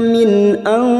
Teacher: Mina min nun sukun bertemu hamzah idhar halki, nun sukun dibaca jelas tanpa mendengung. Min nun sukun bertemu sad ikhfa hakiki kita samarkan bunyi nun sukun dan mendengung selama 3 harokat